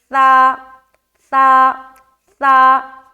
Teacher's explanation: ٹھیک ہے، زبان کو اندر رکھیں گے نا تو سین بن جائے گا. زبان کی نوک کو ہلکی سی باہر رکھے، ثا، دونوں دانتوں میں دبائے اوپر نیچے کے · سین کے اندر حرف صفیر پایا جاتا ہے، صفت صفیر پایا جاتا ہے جس میں سیٹی نما آواز ظاہر ہوتی ہے، اور ثا میں صفت صفیر نہیں پایا جاتا، تو اس کی ادائیگی میں سیٹی والی آواز نہیں آنی چاہیے اور نرمی کے ساتھ ادا کریں گے. زبان کی نوک کو ہلکی سی باہر رکھے، ثا ثا ثا.